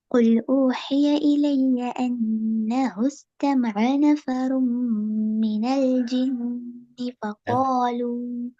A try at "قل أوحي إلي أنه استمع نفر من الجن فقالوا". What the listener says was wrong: நெஃபர் ரூம்ல ராட வல்லினம் போதாது. வல்லினம் வல்லினமான இந்த இடம் வல்லினம். அது வல்லினம் போதாது. நெஃபர் ரூம் ஓதின பகுதிக்குள்ள ரெண்டு இடத்துல சதி செய்யப்பட்ட நூன் மீமோடு தொடர்பான சட்டங்கள் அது ரெண்டுலையுமே வரல. ஒன்று அன்னஹுஸ், ரெண்டாவது மீனல் ஜின்னு. ரெண்டுமே சதி செய்யப்பட்டது.